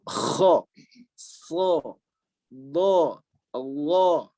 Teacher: huruf-huruf yang bervokalan o terangkat pangkal lidahnya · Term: isti'la